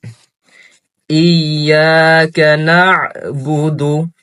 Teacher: এখানে খেয়াল রাখতে হবে আইন আসছে, তো আমাদের গলার ভিতর থেকে সুন্দর করে উচ্চারণ করতে হবে। এবং আলিফের সাথে ইয়া আসছে, তো এখানে আমাদের সুন্দর করে উচ্চারণ করতে হবে।